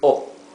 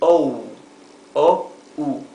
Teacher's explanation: In Spanish this is O, very flat, O. In English it is O, O-U.